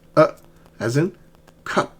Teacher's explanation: it's in the central tongue and it's much stronger than the uh remember uh is very soft but this one is strong is uh as in cup.